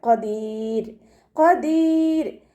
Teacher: പിന്നെ അതിൻ്റെ മുന്നേ ഉള്ള അക്ഷരത്തിന് കെസ്ര വന്നതുകൊണ്ട് നമ്മൾ ഇവിടെ വഖഫ് ചെയ്യുന്ന സമയത്ത് റോക്ക് സുക്കൂന് കൊടുക്കുമ്പോൾ ലൈറ്റാക്കിയിട്ടാണ് വഖഫ് ചെയ്യേണ്ടത്. ഖദീർ എന്ന് പറഞ്ഞിട്ട് വഖഫ് ചെയ്യില്ല.